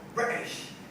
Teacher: Compared to the American accent when speaking informally, the British tend to swallow the T. So for example, when they say British, English don't go British, they go British.